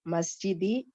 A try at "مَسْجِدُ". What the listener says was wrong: मस्जिदी, मस्जिदी की दाल के ऊपर जेर जबरदस्ती का आप क्यों लगा रहा है? ये मुदाफ पे जर है, तो जेर क्यों आ रहा है मस्जिद और मदरसा के नीचे, किस वजह